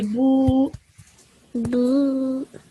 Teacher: So a ba with a dhamma on top of it is bu. But as soon as it is followed by a vaw madda, you would prolong this bu sound for 2 seconds